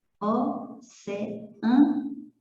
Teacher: o E e o A se separam. Então, isso não é ditongo, isso é hiato.